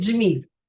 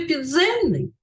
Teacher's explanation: в слові джміль у нас один звук африкат а в слові підземний у нас два звуки д і с